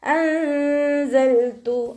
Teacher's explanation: നൂൻ സാക്കിനയെ മറച്ച് വെച്ച് മണിച്ചോതി കൊടുക്കുക കേട്ടോ. നൂനിൻ്റെ സൗണ്ടിനെ വ്യക്തമായിട്ട് കേൾപ്പിക്കരുത്.